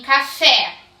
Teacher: em café, qual que soa mais forte, o K ou o Fé? O Fé. Então, o Fé é a sílaba tônica, tá?